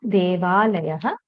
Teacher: Here also we see that instead of akara and akara, there is a single akara.